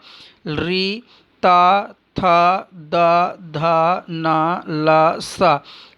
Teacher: ऋतुलशानाम दंताः, रि, ता, थ, द, ध, न, ल, स, इनका उच्चारण स्थान दंत है, अर्थात ये दांत से उच्चारित होते हैं, इसलिए इनको दंत्य भी कहते हैं, दंत शब्द भी कहते हैं।